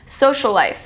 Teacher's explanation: The two L's blend together. The first one at the end of social and the next one at the beginning of life.